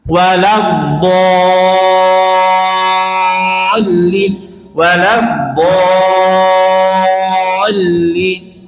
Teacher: Kemudian do-nya panjangnya 6 Pak. Jangan 4. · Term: mat lazim